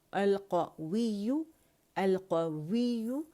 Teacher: complete वाव के लिए रोल करना है और या मुशद्दद को हमने टाइम देना